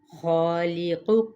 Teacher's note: خالق ہا حروف مستعلیہ میں سے الف اس کے تابع تو یہ اینڈ تک ہم نے موٹا ہی ادا کرنا ہے تفخیم کے ساتھ